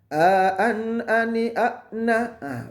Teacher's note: A sama dengan hamzah. Tempat keluarnya adalah dia masuk dalam harfun halqi, huruf-huruf tenggorokan. Dia paling bawah.